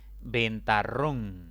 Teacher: esta palabra tiene tres sílabas la mayor intensidad cae en la última sílaba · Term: palabras agudas